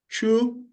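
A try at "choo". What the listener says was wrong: no, it's not chew. Wait, it's not chew. It's cho. Yeah, double O. So there's been only a little confusion on double O. Double O in Swahili remains O. It doesn't move to U. It remains O.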